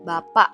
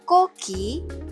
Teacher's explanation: [musik] Contohnya pas kita bicara kata bapak bunyi ke [musik] di akhir kata itu biasanya tidak benar-benar kita letupkan, cuma kita [musik] tahan di tenggorokan namanya glotle stop. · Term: glottal stop